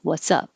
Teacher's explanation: what and up have the same vowel so when you say what's up it's the same uh uh sound